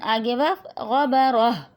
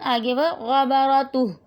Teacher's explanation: ویسے جب ہم ہجوں سے پڑھتے ہیں، رواں پڑھتے ہیں تو یہ تا ہی رہتی ہے، لیکن جب ہم اس کو وقف کرتے ہیں تو یہ ہا بن جاتی ہے، ہا کی آواز آتی ہے